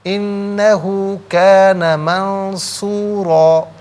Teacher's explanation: تو نون ساکن کو اخفا کے ساتھ پڑھیں گے، را پر 2 زبر کی تنوین پر کر کے پڑھیں گے، اور جب وقف کریں گے تو تب بھی پر کر کے ہی پڑھا جائے گا۔